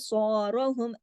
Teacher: با کو کلکلا ہوگا کیونکہ با پہ جزم ہے